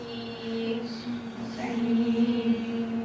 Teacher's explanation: So tongue high, well forward in the mouth, so tongue high and near the teeth.